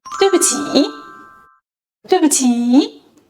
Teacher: In 对不起, the 不 adopts a neutral tone.